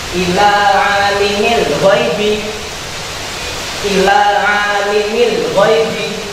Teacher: Jadi huruf ain dibaca sebanyak 2 harokat. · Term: mat tabi'i